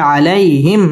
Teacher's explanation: মিম সাকিনে ইজহারে খাস গুন্না ছাড়া পড়তে হবে